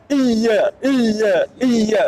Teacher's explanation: waktu ngucapin Iya itu Tengah lidahnya naik jangan di ujungnya